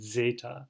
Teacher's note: Zeta, which as they tell you here is like this it's considered a double consonant. You have a DZ sound